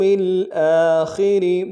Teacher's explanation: باللہ والیوم الآخر، والیوم الآخر، والیوم میں یا کو واو کے سامنے لائیں گے، واو لین بغیر کھینچے پڑھیں گے، میم کو لام کے سامنے لانا ہے، لام ساکن غنہ نہیں ہوگا، حمزہ کے اوپر کھڑا زبر ہے، ایک الف دال میں کھینچیں گے، خا کو موٹا ادا کریں گے، را کو باریک ادا کریں گے